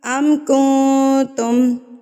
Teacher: چھپا لیں گے، ناک میں اس کی آواز کو چھپا لیں گے. یعنی کہ اگر نون کا جو مخرج ہے نا، اس سے آپ نے اس کو ٹچ نہیں ہونے دینا، زبان کو ہوا میں چھوڑ دینا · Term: اکفا